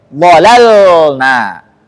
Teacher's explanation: Lam yang kedua harus jelas sukunnya. Enggak boleh ada tawallud.